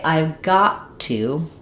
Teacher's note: I don't have two aspirated T's in a row. Instead, when a T comes at the end of a word and the next word starts with a consonant sound, like another T, I don't let that first T out. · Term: stop T